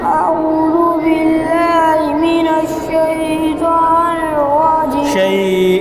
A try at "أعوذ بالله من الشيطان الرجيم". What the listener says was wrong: شين لمبا नहीं गाना देखो. أعوذ بالله من الشيطان الرجيم.